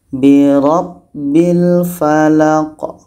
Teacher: huruf Qalqalah Q mati di akhir itu Qalqalah kita pantulkan maka kalau kita berhenti kita pantulkan dulu huruf Qalqalah ini